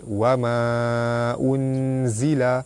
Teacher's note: Hukum dia mad jaiz munfasil, dibaca panjang 2, 4, 6 harakat. Nun mati bertemu dengan zai, hukum dia ikhfa hakiki, cara baca dia dibaca sama-sama nipis dan dengung 2 harakat.